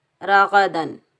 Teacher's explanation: دال کے اوپر تنوین ہے، دو زبر ہے، ہا حروف حلقی میں سے آ رہا ہے تو یہاں ہم دال کو بھی ہم ظاہر کریں گے، نہ غنہ کریں گے نہ اخفا کریں گے، راغدن، اور بغیر کھینچے پڑھیں گے۔